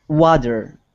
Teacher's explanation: Water is a really good example of when we use that flap T.